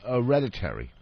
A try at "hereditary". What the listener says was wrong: You left the H off hereditary.